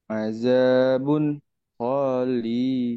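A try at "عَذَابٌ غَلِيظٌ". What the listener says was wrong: Gonya pendek. Kenapa panjang? Nggak ada yang manjangin. Yang panjang li-nya.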